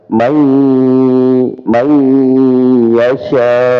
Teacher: bukan sekedar dimasukkan ya, diidghamkan, tapi idgham di gunnah, ada dengungannya ya. May yasha. Nah, jadi pada yasha ya, di sini lebih panjang ya.